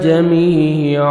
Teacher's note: یا مدہ 1 سیکنڈ میم کو کھینچنا ہے. سٹاپ کریں گے الف مدہ ہو جائے گا.